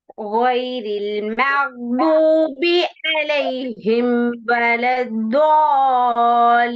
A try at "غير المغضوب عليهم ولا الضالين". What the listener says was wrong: போதாதே போதாதே துவாதிர மத்துடைய அடையாளத்துக்கு நீட்டுறது போதாது வலம் தோ அலீம் ரெண்டு விஷயம் இருக்கு துவாதிர பாருங்க சத்தம் உண்டிக்குதா துவாதில சத்தம் உண்டிக்குது அப்படித்தானே அந்த சத்தம் உச்சரிக்கணுமே வலம் தோ வலம் தோ அந்த சத்தையும் உச்சரிக்கணும் லாம்லயும் சந்திக்குது அந்த அந்த அந்த சத்த சவுண்ட் கேக்குது இல்ல பாருங்க வலம் தோ அல்லீன் இல்லீன் வலம் தோ அல்லீன் அலைஹிம் அலைஹிம் அலைஹிம் ஆயின் வரல அலைஹிம்